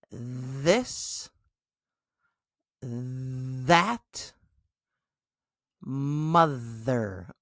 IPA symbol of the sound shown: ð